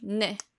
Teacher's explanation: Like when you usually say like Nicholas, you would think that your tongue like would come up and down, but how you would do it in Korean is your tongue would hit the back of your teeth, which is why it can make like a D sound